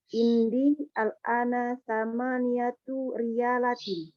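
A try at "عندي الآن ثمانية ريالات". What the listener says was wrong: Ayo, ahsanti, sahih.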